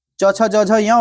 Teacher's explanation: तालु से हो जाएगा च वर्ग